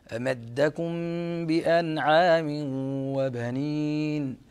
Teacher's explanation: ظهور النون يعني إظهار النون قبل حرف العين، فينبغي أن تظهر النون